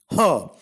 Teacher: Ha is a voiceless glottal fricative.